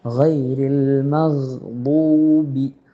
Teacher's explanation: ഗ ഇസ്തിഅല, മുകളിലേക്ക് ഉയരേണ്ട അക്ഷരമാണ് ഗ.